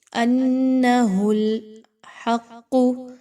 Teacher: حق، ہا اور قاف، قاف مشدد ہونے کی وجہ سے قاف کو اچھے سے پر کر کے پڑھیں گے